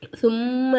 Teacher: மீமுக்கு மேல சத்து இருக்கறதுனால நம்ம என்ன செய்யணும் மீமை நல்லா வந்து அழுத்தி உச்சரிக்கணும்